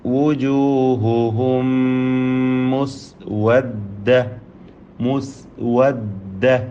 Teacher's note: ഈ സക്കിന മീമിന് ശേഷമുള്ള മീമിൽ പൂർണ്ണമായും ലയിപ്പിച്ച് മണിക്കണം